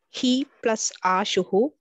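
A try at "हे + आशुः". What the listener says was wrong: ashu only not ashuhu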